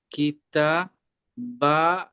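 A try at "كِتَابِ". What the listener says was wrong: কিতা, তাটা যেমন টান তেমন বাটা টান। কাফের নিচে জের আছে।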